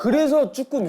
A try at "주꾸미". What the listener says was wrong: 그리고 틀렸어요, 형. 쭈꾸미가 아니라 주꾸미입니다. 표준어가 주꾸미였어요.